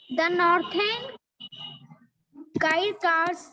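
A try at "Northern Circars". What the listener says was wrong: आप सर्कल बोलते हो ना, तो यहाँ पे सरकार होगा। ठीक है, सरकार तो सर्कल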